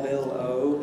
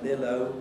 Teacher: Bill might have a darkish L, Bill-O, and Bill-O would definitely have a clearish L